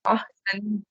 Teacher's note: سین میں سیٹی والی آواز آنی چاہیے, یعنی بالکل کلیئر پڑھا جائے سین کو